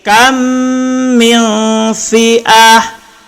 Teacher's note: Min itu ifa hakiki. Sembunyikan nun dan dengung. Jadi seharusnya min kita baca mil, tak kemudian tahan.